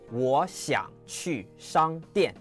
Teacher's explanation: That 想 doesn't rise. It stays low, it creaks, it stops.